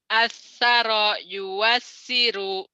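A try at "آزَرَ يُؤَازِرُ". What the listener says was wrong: Asara. Wawunya tak dibaca. Ini ngontrak rumah. Kayak tinggal di Australia kan warga negaranya warga negara Indonesia. Cuman numpang kediaman gitu ya. Tetap aja warga negaranya Indonesia gitu. Walaupun tinggal di Australia. Ini wow ini nggak dianggap nih.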